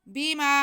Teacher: وَإِذَا قِيلَ لَهُمْ آمِنُوا بِمَا أَنزَلَ اللَّهُ، با کے نیچے زیر اور میم پہ زبر، با کو بالکل نہیں کھینچنا، میم پہ زبر ہے اور ساتھ میں الف ہے، تو یہ الف مدہ ہو گیا۔ میم کی ہم ایک الف کے برابر کھینچیں گے۔